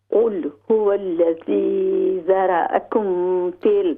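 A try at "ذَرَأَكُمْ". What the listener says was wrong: ہاں جی، یہ جو ہے نا ذرا، اس کی ذرا نہیں، ذرا را جو ہے موٹی کریں گے ہم.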